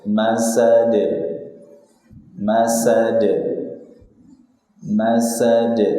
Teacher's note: Akhirnya dengan dal sukun qalqalah kubra.